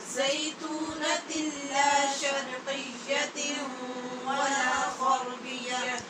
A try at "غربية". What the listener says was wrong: بیا نہیں کہنا، شد ہے یا کے اوپر غربیہ